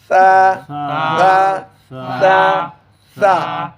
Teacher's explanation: পাতলা করতে হবে, তারকিক করতে হবে। তাহলে জিহ্বার গোড়া ডাউনে থাকবে। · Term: পাতলা হরফ